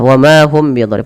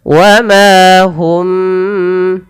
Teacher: hum tahan mimnya ketika bertemu ba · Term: ikhfa syafawi